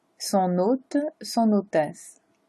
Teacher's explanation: Parce que hôte commence avec un H et le H est silencieux en français. Donc on ignore le H et on fait la liaison avec N et O.